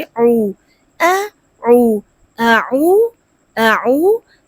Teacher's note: واو ساکن سے پہلے پیش ہے، مد اصلی ہے، تھوڑا سا لمبا کر کے پڑھیں گے